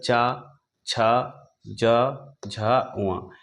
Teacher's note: स्थान होगा तालू इसके अंतर्गत चा छ ज झ व यानी ये पांचों वर्ण जो है इनका उच्चारण स्थान तालू होगा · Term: तालव्य वर्ग, तालव्य